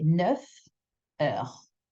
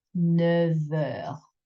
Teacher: When you link words with the letter F, the sound you make with the next word will become a V sound, like a V. If you separate it, you would say 9 heures.